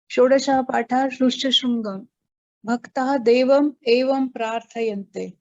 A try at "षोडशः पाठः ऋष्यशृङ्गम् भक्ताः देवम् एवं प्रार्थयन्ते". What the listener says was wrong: Uttamam.